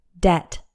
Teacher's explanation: this word has one syllable and the B is silent debt just imagine it's like Det Det rhymes with set and